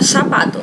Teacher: um falante do sul da Espanha ou um falante latino-americano, ele falaria sapato, ainda que se escreva com Z